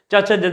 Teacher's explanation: च छ ज ने क्या है? तालव्य।